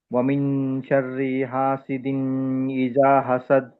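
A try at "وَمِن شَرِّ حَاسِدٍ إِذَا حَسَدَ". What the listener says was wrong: హాసిదిన్ దీర్ఘం లేదు అక్కడ.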